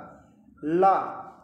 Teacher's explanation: ला का उच्चारण करके देखिए तो समझ में आएगा ला तो ला के बोलने में जो हमारी टंग है वह हमारे तालू को बंद कर देती है और जो ध्वनि है वह तालू के बा किनारे से निकलती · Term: पार्श्विक व्यंजन